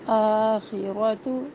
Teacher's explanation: آخرت آواز کو تھوڑا سا ایک حرکت سے لمبا کرنا ہے.